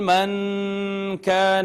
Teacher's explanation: یہاں پہ ناظرین نون ساکن پہ اخفا ہوگا